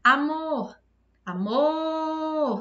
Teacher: Demorei mais no mor. Então, mor é a sílaba tônica.